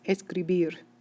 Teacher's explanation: the stress is placed on the ending syllable of the word